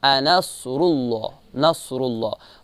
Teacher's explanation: صاد کو موٹا پڑھیں گے اور را کو بھی موٹا پڑھیں گے، چونکہ را پر پیش ہے اور اس کو جب اللہ سے ملائیں گے لفظ اللہ سے تو اللہ کو بھی جو ہے موٹا پڑھیں گے، چونکہ لفظ اللہ میں بھی تفخیم ہوتا ہے اور را میں بھی تفخیم ہے اور صاد میں بھی تفخیم یعنی استعالہ ہے، ٹھیک ہے۔